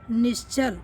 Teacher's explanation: विसर्ग से पहले कोई स्वर हो और बाद में च छ या तालव्य स हो तो विसर्ग का तालव्य स हो जाता है।